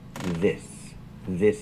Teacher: the s is a true s no voice